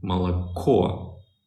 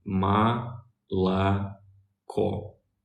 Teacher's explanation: The other two O's, they're not stressed. So the O's that are not stressed, they're pronounced as A. The O that is stressed is pronounced as O. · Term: unstressed